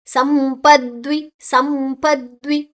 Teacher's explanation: ಮು ಅನುಸ್ವರದ ಉಚ್ಚಾರಣೆ ಮುಂದಿನ ಅಕ್ಷರ ಪ ಇದೆ